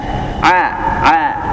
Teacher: Ain itu makhrajnya ada di tenggorokan bagian tengah. Tenggorokan bagian tengah di sini ya.